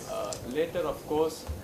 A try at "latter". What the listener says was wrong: Latter. Latter. Otherwise, later is LATER.